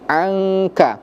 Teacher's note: Nun sukun bertemu dengan huruf kaf. Apa hukum bacaannya? Ikhfa, artinya disamarkan juga. 2 sampai 3 harokat.